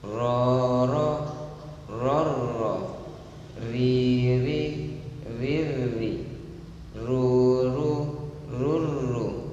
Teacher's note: sifat ra itu bergetar 2 takriron, 2 getaran, tidak boleh kurang dan tidak boleh lebih